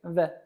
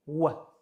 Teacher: Ba'zi o'quvchilar bu harf talaffuzini v bilan almashtirishadi, adashtirishadi. O'zbek tilidagi v harfini talaffuz qilganimizda yuqori tishlarimiz ostki labimizga tegishi kerak. V. Lekin arab tilidagi v harfi faqatgina ikki lab orqali talaffuz qilinishi kerak. V. Ushbu harf nomi vov, o'qilishi v.